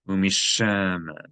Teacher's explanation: You're going to geminate the sheen because there's a dagesh in it, and you're going to elongate the vowel because there is a ta'am. There is a cantillation mark next to the vowel.